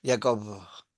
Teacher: Pero es una B que se le escapa el aire.